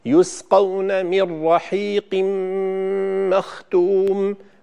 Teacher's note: مر، النون ليس عليه أي علامة تشكيل، الراء مشددة بعد النون، فهذا إدغام بغير غنة كامل